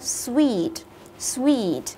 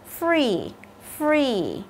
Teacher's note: Cái ngữ điệu khi mà chúng ta đọc nó sẽ đi xuống. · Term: xuống giọng